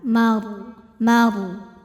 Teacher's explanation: Huruf ra sukun dibunyikan secara tafkhim karena ra sukunnya didahului harokat fathah pada mim. Maka cara baca ro-nya ini adalah ditebalkan, suaranya mengisi mulut dengan cara mengangkat pangkal lidah kita.